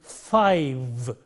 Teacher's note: in this word five-0 this is produced initially it is for there is friction coming out between the teeth and the lip fur as in five and when you come to the final